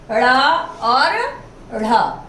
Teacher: उत्क्षिप्त या ताड़न जात, यानी हमारी जीभ या तो उछलती है या हमारे तालु को या मूर्धा को टच करके मार करके वापस आ जाती है। मूर्धन्य उच्चारण है क्योंकि मूर्धन्य से ये हो रहे हैं उच्चारित।